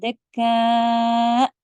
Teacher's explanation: جب آپ حمزہ پہ رکیں گے تو آواز سڈن کٹ کریں گے اور اونچی بھی کریں گے تھوڑی سی